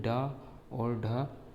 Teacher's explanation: उच्क्षिप्त में ड और ढ दो ध्वनियाँ आती हैं जिन्हें उच्क्षिप्त वर्ण कहते हैं। जिह्वा को मोड़ कर मूर्धा की तरफ ले जाया जाता है, इसलिए उसे उच्क्षिप्त वर्ण कहते हैं।